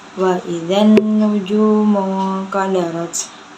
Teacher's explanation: Cara bacanya dimasukkan ke dalam nun. Nunnya juga termasuk gunnah nun karena nun berharokat tasydid atau nun musyaddadah. Cara bacanya ditekan.